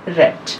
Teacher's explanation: The only example of frictionless कॉन्टिन्यूएंट in RP of English is र as in रेड। जो हमारा सिर्फ frictionless कॉन्टिन्यूएंट है वो एक ही है इंग्लिश में, हमारे जो साउंड्स हैं उसमें रेड में जो स्टार्टिंग में रा आता है, र एज इन रेड।